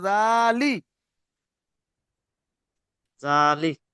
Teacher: লামজের লি টান হবে না শুধু শুধু জালটাই টান হবে